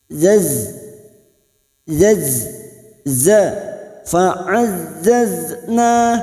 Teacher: Huruf zain yaitu ujung lidah ditempelkan ke tempat pertama tumbuh gigi seri bawah